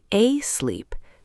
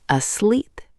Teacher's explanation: The stress is on the second syllable. Asleep. Don't say a sleep, say asleep.